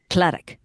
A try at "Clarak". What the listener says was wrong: Well, don't roll your R too much. You almost get to that rolled R, but then don't do it.